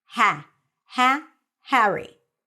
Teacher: if you want to stick to the British pronunciation keep it a as in cat